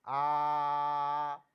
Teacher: तो आपको बताऊंगा, मुख द्वार खुलने के आधार पर विव्रत, विव्रत स्वर होते हैं। विव्रत स्वर में मुंह पूरा खुलता है